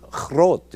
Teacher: including groot in Dutch, where the G is softened to a guttural ch